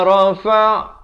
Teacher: La rafa' ainnya di tengah kerongkong ini